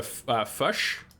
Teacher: But that's the classic example, that the classic tell apparently of a native New Zealander. No, it's more of a U sound, so it'd be closer to fush instead of fish. It's fush.